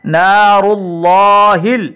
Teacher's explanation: یہاں پر را پر پیش آنے کی وجہ سے را کو بھی ہم موٹا پڑھ رہے ہیں اور اللہ کی لام کو بھی موٹا پڑھیں گے